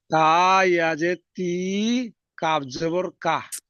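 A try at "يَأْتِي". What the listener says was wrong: কাপটা জুড়ছেন কেন এক্ষুনি? ইয়া তি এই পর্যন্ত আসেন, তারপর কাপটা জুড়বেন।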